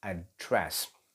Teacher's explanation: When you say address, the stress goes on to its second syllable